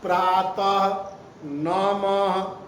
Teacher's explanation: विसर्ग का उच्चारण हल के ह की भांति होता है।